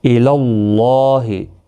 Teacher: اللہ کا لام زبر کی وجہ سے پر پڑھا جائے گا